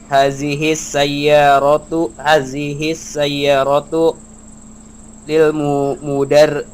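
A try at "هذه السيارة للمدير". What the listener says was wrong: Betul, masya Allah, mumtaz ya.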